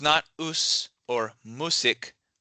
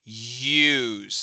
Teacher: There's kind of a y sound coming up at the front.